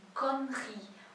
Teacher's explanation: O E aí do meio quase não é pronunciado.